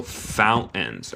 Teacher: En mi acento, el acento estadounidense, tenemos un glottal stop.